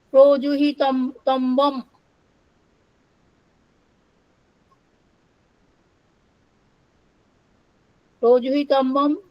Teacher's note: Projuhitabbam word comes from Prapurvak Hi Dhatu Tabbo Puttar, which here becomes Tambam. Tabbo becomes Tambam, spontaneous, by spontaneous nasalization